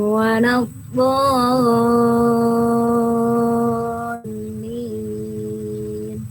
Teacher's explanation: Jadi di mana-mana ada huruf yang bertasydid yaitu lam sesudah huruf mad ya di akhir kalimat. Jadi bacanya panjangnya 6 harokat, beda sama mad tabi'i. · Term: mad lazim musaqal kilmi